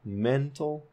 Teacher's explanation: the word mental, men is the primarily stressed syllable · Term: primary stress